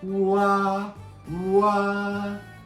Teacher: Oo is from back highest place. Ah is like lowest places and the middle place. Wa, wa. And the shape of your mouth is oo round.